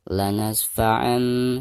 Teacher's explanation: Jadi suara tanwinnya itu harus digantikan ke suara mim sukun. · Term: iklab